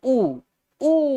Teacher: ऊ बोल के देखो, ओठ पास आने की कोशिश कर रहा है, तो ये ओष्ठव्य वर्ण होंगे